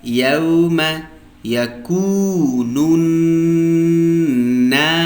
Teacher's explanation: په پای کې د سین هغه نري شپېله که صفا ووایست یعنې ښکاره یې کوي. که چیرې تاسې په دې کې توجه ونه کوئ سین 100% نه ادا کېږي. · کله چې واو مده یو الف کش کی د نون پیش یا دا بل نون د شد سره جنگو او پر شد باندې غنه کو ځکه دا نون مشدد دی. یوم یکون الناس په پای کې د سین هغه نري شپېله که صفا ووایست یعنې ښکاره یې کوي.